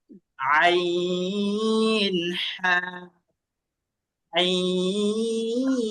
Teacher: কণ্ঠনালীর মাঝখান থেকে 2টা হরফ উচ্চারণ হয়।